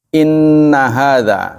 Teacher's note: Inna nun tasydid dibaca lama.